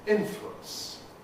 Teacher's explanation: Compression gives us influence, making it just 2 syllables. Influence, as the U thank you vowel becomes the corresponding semivowel